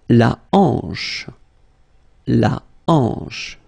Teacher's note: H here is not pronounced, so you get the sound en, hanche at the beginning